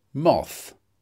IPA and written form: mɒθ (moth)